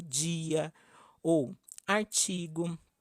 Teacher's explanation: A palatalização das consoantes D e T quando precedem a vogal I